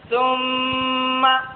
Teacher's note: میم مشدد میں ایک الف کے برابر غنہ ہوگا۔